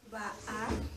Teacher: It using the glottal stop. It means a catch in the throat.